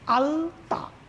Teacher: এরপর যখন আমরা আলতা শব্দটি উচ্চারণ করছি, একই ল দেখো আলতা, ঠিক দাঁতের গোড়ায়, মাড়িতে নয় কিন্তু, ঠিক দাঁতের গোড়ায় স্পর্শ করলো, অর্থাৎ দন্ত, দাঁতে স্পর্শ করলো বলে আমরা এই লকে বলবো দন্ত ল